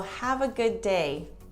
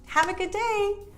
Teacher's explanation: We kind of just use one D for both words. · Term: blending